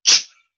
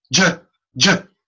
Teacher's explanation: If you take the letter CH and put a voice in it, ch J-J, now you have a J.